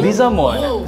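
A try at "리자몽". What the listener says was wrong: It's not mon, mong.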